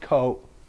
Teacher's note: the third tone which goes down and up again